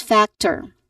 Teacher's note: it clearly shows a schwa sound so the vowel sound is weak and unstressed